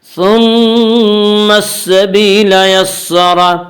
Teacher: یسر کے را کو پر پڑھیں گے۔ اس کا قاعدہ ہے کہ را کے اوپر زبر و پیش آئے تو را کو پر پڑھیں گے، را کے نیچے زیر آئے تو را کو باریک پڑھیں گے، یا را کے اوپر زبر ہے اسے را کو پر پڑھیں گے۔